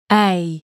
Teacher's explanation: This one starts out at E and ends I, A. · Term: diphthongs